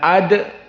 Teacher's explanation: Dal di sini juga muraqaqoh namun di sini Dal Sakinah maka dia hukumnya adalah Qalqalah